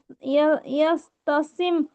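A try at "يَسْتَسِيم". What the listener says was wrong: ইয়াস নেই, ইয়াস নেই, ইয়া, ইয়া আইন যাবার ইয়া, তাসিম।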